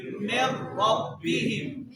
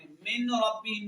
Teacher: نون ساکن کو لام یا را میں ادغام کر دیں گے. مطلب نون کو لام اور را میں ملا دیں گے